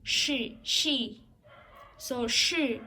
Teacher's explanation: Naging sound value she, SH yung kasi sinundan siya ng vowel I.